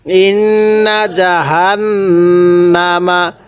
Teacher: আছে কিন্তু নুনের মধ্যে আমরা এক আলিফ টান দিয়ে থাকি তো নুনের মধ্যে আমরা কোন টান দিব না